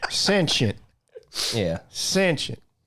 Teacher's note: put the emphasis on the first syllable